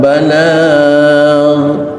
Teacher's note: Mohon tidak mengkolkolahkan ghin, karena ghin bukan huruf qalqalah. Bacalah tanpa pantulan qalqalah.